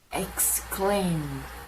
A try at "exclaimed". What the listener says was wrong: Yeah, that first one was perfect, and then you went exclaim again. And it's not M, it's aim. Exclaimed.